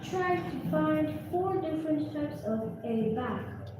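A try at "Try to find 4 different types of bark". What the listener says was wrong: No. Did you see A here? Read again.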